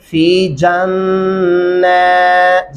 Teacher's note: اولئک المقربون فی جنات النعیم، کیا پڑھیں گے؟ فی جنات، جیم کو نون کے ساتھ ملائیں گے اور نون کے اوپر کھڑی زبر ہے، پھر وہ لمبا بھی ہو جائے گا نون